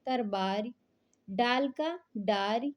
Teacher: अवधि में ला जो है ध्वनि प्राय रा हो जाती है